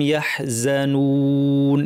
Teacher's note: হবে, অতিরিক্ত লম্বা গুন্না ছাড়াই, খাউফুন আলাইহিম ওয়ালা হুম ইয়াহজানুন, এখানে ওয়াও নুন আমরা লম্বা করে দুই আলিফ টেনে থামবো